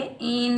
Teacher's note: नून मुशद्दिद पर हम एक अलिफ की मिकदार गुन्ना करेंगे, बगैर खींचे पढ़ेंगे इन।